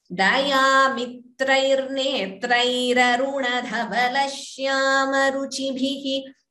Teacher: That visarga goes and ra comes in its place instead of the visarga and a.